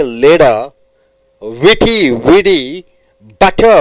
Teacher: the T changes into D